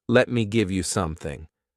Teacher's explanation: so they just omit the letter T and you get lemi